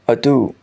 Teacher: the phonetic alphabet d is a voiced alveolar stop